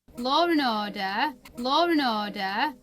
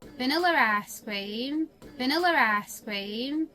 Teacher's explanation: r can be inserted after certain vowels to separate them from a following vowel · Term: intrusive R